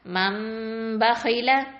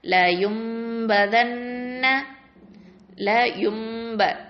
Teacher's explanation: நூன் சாக்கினா இல்லை தன்வீனில் உள்ள அதை என்னவா மாற்றணும், மீமா மாற்றி அந்த இடத்துல கொஞ்சம் மறைச்சு குன்னாவோட ஓதணும். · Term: இக்லாப் சட்டம்